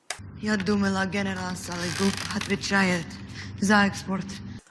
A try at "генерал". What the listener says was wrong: Я думала, генерал Сологуб отвечает за экспорт. Okay, everything's going pretty smoothly here, except the emphasis. In English, it's general, and in Russian, it's генерал. So basically, we're talking here about a simple reduction of the vowels which are not stressed.